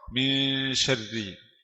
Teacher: Samar. Masih ada suara nun tapi suara samar. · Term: ikhfa